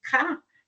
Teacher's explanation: Então, quando nós fazemos assim, por exemplo, K, nós vamos ver que o som é produzido mais no fundo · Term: velar